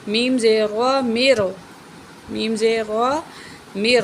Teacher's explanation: را کو موٹا کر کے پڑھیں گے